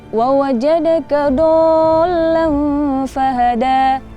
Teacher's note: itu do-nya tidak panjang dan dot-nya itu malah diganti dengan dal